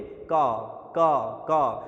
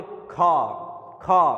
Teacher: तो खा में क्या आएगी, ज़्यादा वायु आएगी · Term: महाप्राण